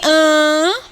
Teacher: Então, toda vez que você encontrar uma obstrução, você encontra uma consoante. Em an, você tem obstrução? Não, você tem nasalização. Então, por isso que o an é uma vogal, ok? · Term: vogal nasal